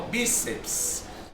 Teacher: Perceba que a sílaba tônica é o bi.